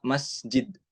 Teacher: huruf sin ini dia memiliki sifat hames dan ada sifat khususnya yaitu sofir, tipis